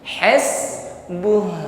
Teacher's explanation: bukan berhenti di hasbu namun tampakkan sifat Hnya alirkan bunyi Hnya